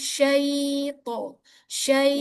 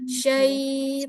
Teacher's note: huruf lin itu panjangnya satu setengah harakat